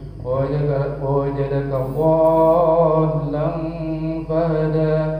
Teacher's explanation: Biasanya kalau kita dengarkan agak panjang, 6 harokat itu agak diayun. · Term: Mad lazim mustaqal kalimi